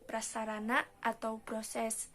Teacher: terjadi persenyawaan dari dasar pengucapan kedua konsoid tersebut melalui perpindahan yang sangat cepat, yaitu dari bilabial tidak bersuara kepada apikoalveolar getar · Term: gugus konsoid PR